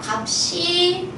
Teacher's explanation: 지라고 발음하는게 아니라 어떻게 발음한다고 갑 시라고 발음해요 갑시 괜찮으실까요 그래서이 시옷이 넘어가면 쌍 시옷으로 된소리로 발음이 됩니다